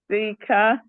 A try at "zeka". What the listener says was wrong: Now you see you pronounce double A or double E as E. It is double A. In Swahili it's double A. It's come out as Zeka, not Zika, Zeka. Zeka.